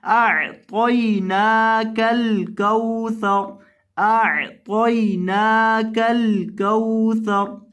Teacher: और वक़फ़ की हालत में रॉ को साकिन करना है